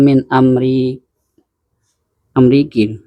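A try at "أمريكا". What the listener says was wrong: Amerika loh. alifnya kok Ameriki. Ada alifnya loh, alif berdiri jelas itu Amerika. Kan nggak mungkin Kia. Bacanya Kia nanti. Jadi nggak mungkin kasroh dibaca setelahnya alif. Nggak mungkin kan? Nggak bisa kebaca kan? Tapi ada pengecualian. Satu ada.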